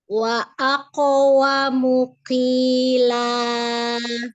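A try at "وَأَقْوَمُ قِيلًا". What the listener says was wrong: Masih ada hamas berarti masih tercampur ke huruf kaf. Ke belakang lagi. Ke belakang lagi lidahnya. Pangkal lidahnya.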